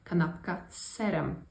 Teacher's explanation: the z becomes more of an S sound once again